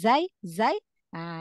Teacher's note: huruf Zai ujung lidah enggak keluar ya ujung lidah enggak keluar